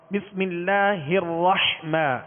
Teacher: حا کو وسط حلق سے ادا کریں گے. الرحیم، اس میں بھی حا کو وسط حلق سے ادا کریں گے.